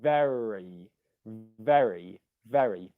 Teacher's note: in the word very the ve is stressed that's the stressed syllable